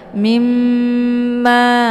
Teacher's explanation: Jadi cara bacanya itu didengungkan ya. Jadi mimnya ditekan kemudian ditahan suaranya 2 harokat sambil dileburkan suara ke dalam huruf mim. Mimma ya, jangan langsung mimma ya, tapi ditahan dulu sehingga terbentuk suara yang mendengung. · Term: gunnah musyaddadah